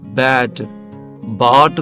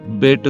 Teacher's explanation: ఏ కి అ కి మధ్యలో ఉంది కాబట్టి రెండిటికీ మధ్యస్థంగా పలకాలి అంటే ఆ అని పలకూడదు ఏ అని పలకూడదు రెండిటికీ మధ్యస్థంగా ఆ అని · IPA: / æ /